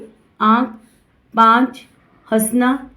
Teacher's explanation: इसका उच्चारण मुंह और नाक दोनों से होता है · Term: अनुनासिक